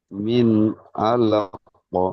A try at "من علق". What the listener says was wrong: জি, মিন গুন্না করবেন না, মিন আলাক।